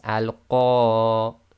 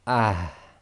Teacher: So on that first sentence there, it will be al-Qariyah, and you'll hear a slight breath, a slight ha at the end coming from the bottom of the throat. So again, it's al-Qariyah, and you'll hear but very, very soft.